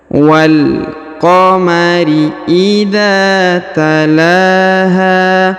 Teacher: Huruf la dibaca panjang 2 harokat karena di atasnya terdapat alif kecil. Huruf ha dibaca panjang 2 harokat karena di depannya terdapat alif ya.